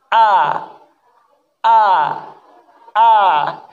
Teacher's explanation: Huruf A, dia makhrajnya dari pangkal tenggorokan. Dibuka mulutnya